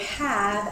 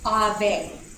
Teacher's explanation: an English learner might pronounce the word have as ave, because in Spanish the H is silent and both the A and the E are pronounced.